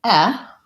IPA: ɛ